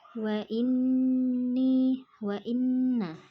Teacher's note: ada nun berharokat tasydid, maka dibaca mendengung atau gunnah